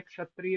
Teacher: उसका उच्चारण ककार का यानी का का मुख में रह जाता है परंतु बाहर सिर्फ श आता है।